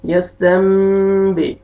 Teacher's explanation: نون ساکن کے بعد با آ رہا ہے، آپ نے نون کو میم میں چینج کرنا ہے اور اخفا کرنا ہے